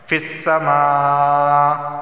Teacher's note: فا کو سین کے ساتھ ملا کر پڑھیں گے